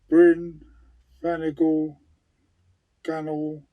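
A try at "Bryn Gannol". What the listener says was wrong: You did say that. It's not flannel. There's a bloody N in it and a G.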